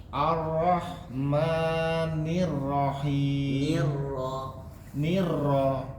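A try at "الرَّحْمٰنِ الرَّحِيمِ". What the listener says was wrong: Nah, itu nirra, itu bacaannya tipis, Pak. Tebal. Kalau bacaan tebal, tidak kelihatan getaran yang sangat berlebihan. Karena ketika ro itu getarannya cuma 2 kali, Pak. Takrir namanya, tapi cuma 2 kali. Ar-ro, tidak ar. Nirrahim.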